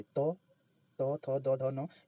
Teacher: त त थ द ध न ये सभी दंत है लेकिन ट ट जो है वो दंत का नहीं है